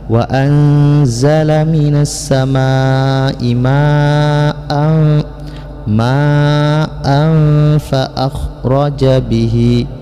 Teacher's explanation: menyembunyikan suara tanwin ke dalam huruf fa sehingga tanwin ini terdengar samar-samar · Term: ikhfa